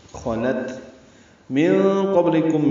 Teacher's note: نون ساکن کے بعد قاف آنے کی وجہ سے اخفا ہوگا، نون کی آواز چھپائیں گے. قاف پر پڑھیں گے، با ساکن پہ قلقلہ ہوگا، لام باریک، کاف باریک، میم ساکن پہ اظہار شفوی.